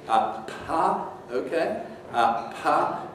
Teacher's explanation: For English, you have this puff of air which comes before the vowel starts operation. So you have this little, sounds almost like a little H, like puff of air. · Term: aspiration